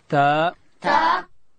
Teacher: تا ادا کیږي چې کله د لوړې زامې د مخ دو غاښو بیخو ته د ژبې سر وروړو، دلته حرف تا ادا کیږي.